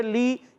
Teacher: مگر یہاں یا ساکن سے پہلے زیر ہے، یا مدہ بن گیا، اور یا مدہ کو ایک الف کھینچیں گے